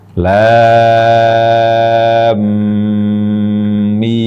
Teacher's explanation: lam huruf terakhirnya bertemu dengan huruf mim pertama dari huruf alfabet mim jadi masukkan ke mim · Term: gunah